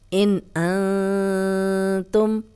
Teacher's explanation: ہم غنہ نہیں کریں گے، کلیئر پڑھیں گے، نون ساکن کی کلیئر آواز آئے گی